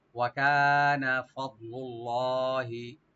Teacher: কাফ open রেখে একালে টানবেন, নুনে কোনো টান হবে না